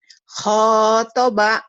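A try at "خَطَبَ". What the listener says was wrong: Pendek. Iya, khotoba. Tadi kau bacanya panjang. Yang kedua baru khotibi. Karena ada panjang. Jadi seperti bercanda kita, tapi ternyata dalam Quran itu panjang pendek punya peranan penting gitu. Bisa merubah arti.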